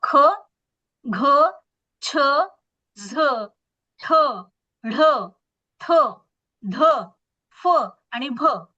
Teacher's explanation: तर ह या वर्णाचा उच्चार करत असताना, ह या वर्णाचा उच्चार करत असताना बघा, फुफ्फुसातली हवा तोंडावाटे जोरात बाहेर फेकली जाते, म्हणून या वर्णाला महाप्राण असं म्हणतात.